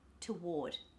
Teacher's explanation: at the end the schwa doctor being the non-stressed syllable toward ward is the stressed syllable so the t o in the beginning becomes t toward symbol